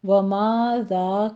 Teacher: زال کو نرمی سے پڑھنا، سیٹی کی آواز نہیں آنی چاہیے